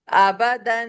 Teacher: دال دو زبر دن، کیونکہ جب انڈیویجل تنوین پڑھی جاتی ہے اور اس کے آگے کوئی حرف نہ ہو تو ہم غنہ کر کے پڑھتے ہیں